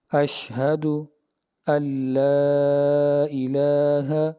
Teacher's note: نون ساکن کے بعد لام آ گیا تو ادغام بلا غنہ ہے